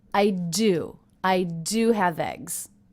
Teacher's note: there was just a little pause there for the punctuation I also notice how I stress the word do